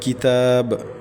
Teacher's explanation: با کے اوپر پڑی حرکت میں پیش ہے، تو اس کو لمبا نہیں کرنا، جھٹکا بھی نہیں دینا اور مجہور بھی نہیں پڑھنا، بلکہ سمپل سا ادا کرنا ہے۔